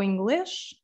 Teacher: the S at the end also becomes a sh sound